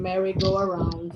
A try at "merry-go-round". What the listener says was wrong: not a merry-go-around. It's merry-go-round. go round.